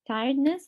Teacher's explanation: for the last word tiredness the stress is on the first syllable